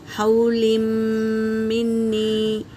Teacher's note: لام کو میم میں ملائیں گے اور غنہ کریں گے